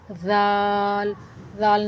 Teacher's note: ذال پڑھ کے دیکھیں، آپ بھی اپنی زبان کے سرے کو سامنے والے دو دانت کے ساتھ کنارے کے ساتھ لگائیں۔ ذال، ذال نرمی سے پڑھا جاتا ہے، ٹھیک ہے، اس کے اندر سختی کی آواز نہیں آنی چاہیے جیسے زا کے اندر آتی ہے۔ ذال کے اندر سختی کی آواز نہیں آنی چاہیے، اس کو نرمی سے پڑھتے ہیں۔